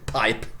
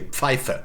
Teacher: You see, p became pf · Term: consonant shift